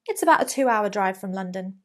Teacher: the final sentence would usually have a falling intonation a falling pitch at the end